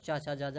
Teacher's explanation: जो चा वर्ग होता है वो कैसा होता है? तालब्य होता है, चा छा जा झा।